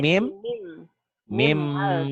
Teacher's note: Ditulisnya ada bunyi N-nya dibacanya bunyi N-nya hilang. Hilang melebur ke bunyi M. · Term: Idgom diguna